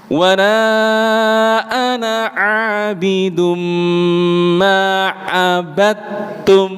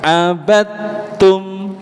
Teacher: dal sukun bertemu dengan ta, tidak dikolkolahkan